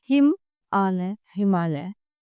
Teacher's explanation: हिम के अ तथा आलय के आ के पासपास होने के कारण उनका उच्चारण मिलकर आ हो गया है। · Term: संधि